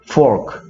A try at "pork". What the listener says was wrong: pork. pork. 그러니까 P가 내는 P 소리와 F가 내는 F 소리는 구분해서 발음해줘야 돼.